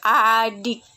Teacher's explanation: Bunyi I, ciri-ciri agak tinggi tak bulat.